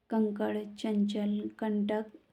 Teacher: इनके उच्चारण में नाक से अधिक हवा सांस निकलती है। मुंह से कम। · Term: अनुस्वार